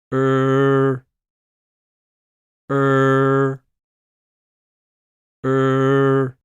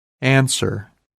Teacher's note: a little and leave your lips neutral or round them slightly the ER is a weak sound so your tongue and throat should be relaxed raise the front of your tongue toward the alveolar Ridge behind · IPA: ɚ